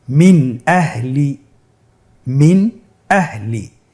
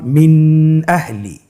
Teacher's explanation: নুন সাকিনকে স্পষ্ট করে পড়ব, গুন্না ছাড়া পড়ব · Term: ইজহার